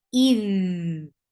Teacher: Dal will get rakhawa. The sound should flow very well.